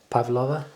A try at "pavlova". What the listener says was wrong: Yeah, that's not how you normally say it. You somehow put an extra A in it.